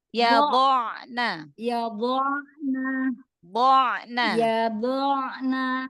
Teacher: Jadi dot itu dia selain punya sifat isti'la ya, naik suaranya, tapi dia juga punya itbak, terkepung. Jadi dikepung di antara permukaan lidah dan langit-langit.